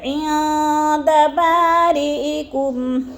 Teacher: کم عندہ پہ بھی اظہار ہو رہا ہے، عین میں اخفا، نون ساکن کے بعد دال آ گیا تو ادھر اخفا ہے، آواز کو ناک میں چھپا کر پڑھیں گے